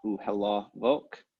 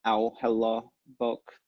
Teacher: the a and the u will tend to merge into au hela vok